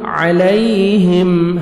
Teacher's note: یا لین ہے نرمی سے ادا کریں گے